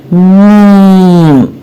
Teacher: میم کے اندر غنہ موجود ہے، یعنی ہونٹوں کے ساتھ ساتھ ناک کے ذریعے اس کی آواز باہر کو آتی ہے. تو جب بھی ہم میم پڑھیں گے تو آواز ناک سے بھی باہر آئے گی. · یعنی میم بولنے کے لیے ہمارے دونوں ہونٹ ملے اور پھر ان کو الگ کرتے وقت یہ آواز پیدا ہوگی. میم کی آواز دونوں ہونٹوں کے ملنے سے بنتی ہے اور ہونٹوں کے ساتھ ناک کے ذریعے یہ آواز باہر کو آتی ہے. اسی لیے کہا جاتا ہے نا کہ میم کے اندر غنہ موجود ہے. · دیکھا آپ نے؟ یعنی میم بولنے کے لیے ہمارے دونوں ہونٹ ملے اور پھر ان کو الگ کرتے وقت یہ آواز پیدا ہوگی. میم کی آواز دونوں ہونٹوں کے ملنے سے بنتی ہے اور ہونٹوں کے ساتھ ناک کے ذریعے یہ آواز باہر کو آتی ہے.